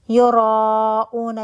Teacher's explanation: 1 word میں مدہ کے بعد حمزہ 4 to 5 کاؤنٹ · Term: مد متصل واجب